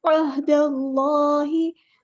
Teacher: अहदल्लाहि दाल बारीक अदा करना है, अल्लाह का लाम पूरा अदा करना है, हैवी लेटर है, इसमें जलाला तफ़ख़ीम हो रही है।